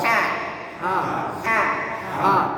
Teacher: tidak ada ngoroknya bukan Kha tapi ha ha kering dia kering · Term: huruf ha